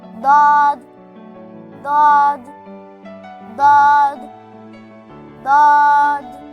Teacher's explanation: My sound looks similar to dal, but it's not. DAWD sound is heavier and thick.